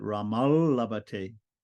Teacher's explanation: the when when the second word begins with an L right the dental T is going to be flavored by the L and it's going to also turn into an L